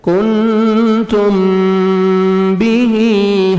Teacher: میم ساکن کے بعد جب با اور میم مشدد آتا ہے تو نوز میں ساؤنڈ لے کے جاتے ہیں. کنتم بیہی، ہاں کے نیچے کھڑا زیر ہے، یا مدہ کے قائم مقام ہے، 1 سیکنڈ آپ نے کھینچنا ہے.